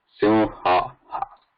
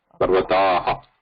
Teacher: This ha has a nada vibration in it, and whereas visarga has no vibration, it's just the breath. Ha has both nada and breath, whereas visarga is breath minus nada.